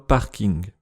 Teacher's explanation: Le son [ŋ] est à la base étranger au français, mais on le trouve dans des mots comme « parking »